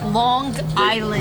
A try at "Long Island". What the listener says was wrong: What makes you pronounce that G? Long.